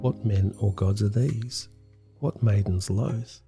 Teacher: line eight is an example of perfect iambic pentameter meaning 10 soft hard soft hard beats to a line